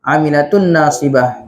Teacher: So kita akan baca ma'al gunnah kat situ lah. Ma'al gunnah maksud dia bersama dengung. So kena ada dengung.